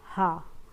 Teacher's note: काकल्यवर्ण सिर्फ एक होता है ह तो यानी कि क्या होता है? इसमें मुंह गुवाहा खुली रहती है और वायु जो होती है वह कंठ को खोलकर बाहर निकलती है। · इसमें मुख गुहा खुली रहती है और वायु जो होती है वो कंठ को खोलकर बाहर निकलती है, जैसे बोलो हा, तो हा जो होते हैं वो काकल्य वर्ण है।